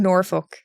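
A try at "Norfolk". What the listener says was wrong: you don't have to say the L you just suggest it don't completely skip it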